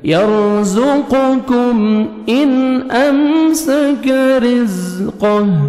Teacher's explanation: نون ساکن کے بعد حمزہ ہے, یہاں پہ آپ نے اظہار کرنا ہے